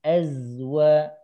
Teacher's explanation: Nah, itu masih agak putus dengan waw. Az-nya, bunyi az-nya sambungkan dengan waw